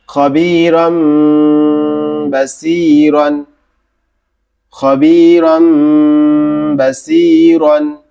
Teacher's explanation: মিম দ্বারা পরিবর্তন করতে হবে। মিম দ্বারা পরিবর্তন করে গুণনা সহ পড়তে হবে।